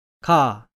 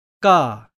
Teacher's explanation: 어떻습니까? 가라고 할 때는 인두의 변화가 없지만 된소리인 까라고 하면 침을 삼킬 때만큼 그렇게 강하진 않지만 분명히 인두가 수축되는 것을 느낄 수 있습니다. 이렇게 가볍게 인두가 수축되면서 된소리 발음이 납니다.